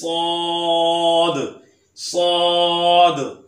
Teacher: जब इसे अदा करते हैं तो सीटी की तरह आवाज आती है। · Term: हरफे सफीरिया